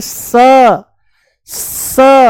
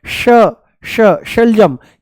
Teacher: इसका उच्चारण है श, मूर्धा ऊपर है ना श, और इसका है स, स, ये है स, दांतों से बोला जाएगा, ये है तालू से श